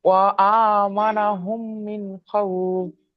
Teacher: নুন সাকিনের পরে খ এসছে, হামজা হা আইন হা গাইন খ, এই 6টি অক্ষরের মধ্যে থেকে এখানে খ এসছে, তাই নুন সাকিনের আওয়াজকে জাহির করে বিনা গুণায় তাড়াতাড়ি পড়তে হবে। একে এজহারে হালকি বলে বা এজহার বলে।